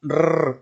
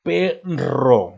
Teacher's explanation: sonido vibrante múltiple y fuerte